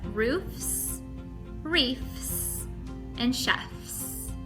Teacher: you'll notice two continuant sounds at the end of each word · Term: continuant continuant final blends